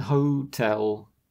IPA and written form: 'həʊtɛl (hotel)